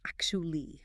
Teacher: People try to say actually, but the T and U blend into a chi sound.